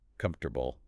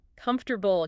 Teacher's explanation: >> This is called elision. So native speakers take those four syllables in comfortable and swallow the middle entirely. They compress it into three messy sounds.